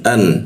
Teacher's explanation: A a masuk ke nun an. Nah, nun warna hijau kita dengungkan ditahan dua ketukan